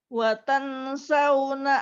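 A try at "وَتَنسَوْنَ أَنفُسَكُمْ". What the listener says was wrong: Tahan, jangan lupa ditahan lebih lama. Oke, Ibu jangan ragu-ragu ya. Tahan lebih lama. Watang sauna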